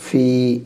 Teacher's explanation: فا زیر فے پڑھیں گے تو مجہول ہو جائے گا، وہ صحیح نہیں، معروف پڑھنا ہے